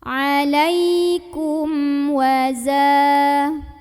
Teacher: mim sukun ini dibunyikan dengan jelas, bunyi dan tidak ditahan · huruf za yang baris fathah ini dipanjangkan 2 harokat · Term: idhar syafawi, mad tabi'i